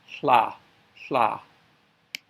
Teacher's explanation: And then the TL sound, hold the T and release to L to make the TL sound